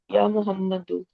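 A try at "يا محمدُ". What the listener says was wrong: या मोहम्मद दू, नॉट दुन।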